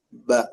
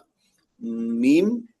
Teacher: yang membedakan mim dan ba itu ba jahar syiddah, mim ee jahar rakhawah itu ya jahar rakhawah bedanya rakhawahnya itu.